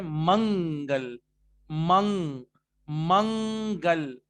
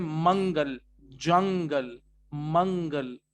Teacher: جب آپ منگ کہہ رہے ہیں, منگل, منگ, منگل, آپ دیکھیے گا جب آپ نے کہا منگ تو زبان کہیں نہیں لگ سکتی ورنہ وہ من ہو جائے گا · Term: نون کو چھپانے